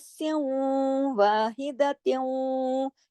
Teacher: یہ دونوں ناقص غنے ہو رہے ہیں، یعنی آواز کچھ غنے کی شکل اختیار کر رہی ہے، کچھ واؤ کی آواز آ رہی ہے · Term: ادغام ناقص